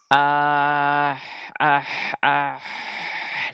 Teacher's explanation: usahakan ha yaitu makhrajnya dia di tengah tenggorokan ya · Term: huruf ha